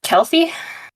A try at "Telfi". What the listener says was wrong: Telfi, with a T.